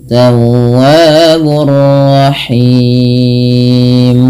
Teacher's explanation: Panjangnya boleh dua harakat, boleh empat dan boleh pula enam. Tapi kita ngambil yang empat harakat. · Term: mad arid lisukun